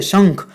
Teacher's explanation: શંખ એમાં ન બોલી શકાય નહીં, શંખ એમાં અંગ બોલાય છે.